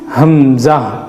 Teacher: ہا اور حمزہ, یہ دونوں کا پروننسیشن, دونوں کا تلفظ ایک ہی ہے جو اقصائے حلق سے نکلتا ہے